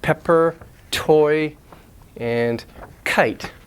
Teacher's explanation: before a stressed vowel a stressed syllable have this puff of air aspiration